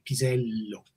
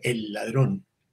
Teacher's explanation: en español no hay palabras con doble L como pisello. Es como que se alarga la L, pisello. Pero si tú dices, el ladrón, aunque sea en dos palabras, sí tienes que repetir la L, aunque no te des cuenta.